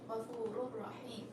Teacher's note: I didn't put any sound with my nose. I'm just saying it clearly. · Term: idgham bi ghayri ghunna